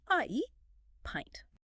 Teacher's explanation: You start with your mouth wide open a sound and glide your jaw up into a smiling e sound.